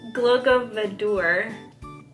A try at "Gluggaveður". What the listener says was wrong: The D, it's not actually a D. Yeah. Gluggaveður.